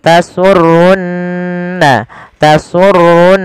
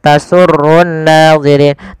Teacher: kita baca dengan bacaan gunah ditahan suara nunnya